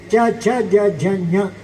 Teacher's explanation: ಅದೇ ಕವರ್ಗ ಮುಗಿದ ನಂತರ ಚ ಬೇಕು ಅಂತ ಇದ್ದರೆ ನಾಲಿಗೆಯ ಮಧ್ಯಭಾಗ ಬೇಕು